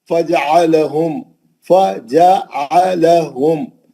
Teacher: Line से 4 जबर है, एक एक हरकत, कहीं भी लंबा नहीं करना. फजअलहुम, मीम साकिन का इजहार शफी हर्फ कैफ.